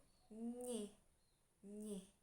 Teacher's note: menahan, menghambat saluran udara yang keluar sehingga udara keluar melalui hidung